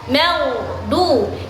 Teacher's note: huruf g matinya itu ditahan. ditahan. Jangan sampai dia memantul. · Yang benar adalah maghdu. Jadi huruf gha matinya itu ditahan, jangan sampai dia memantul, taruhkan dia, tempatkan huruf gha itu di ujung tenggorokan, tempatkan.